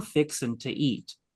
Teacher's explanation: dropping the G off of fixing to, T-O instead of T-A instead of T-O, to, elongating the A, fixing to eat.